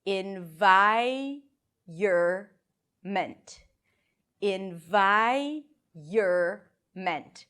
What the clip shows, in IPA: ɪn-ˈvaɪ-(y)ər-mənt